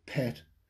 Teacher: that p is released with a big burst and aspiration of air